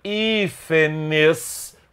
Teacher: O plural de hífen tanto pode ser hífenes com acento agudo, por ser uma palavra proparoxítona, com a antepenúltima sílaba mais forte